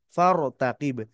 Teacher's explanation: র সাকিন ডাইনে জবর রকে আমরা মোটা করে পড়েছি